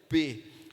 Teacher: E aí ele sai com uma explosão porque houve uma contração dos meus lábios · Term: bilabial